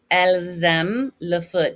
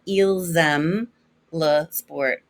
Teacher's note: we have a vowel and an s that we normally don't hear we hear a z sound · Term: liaison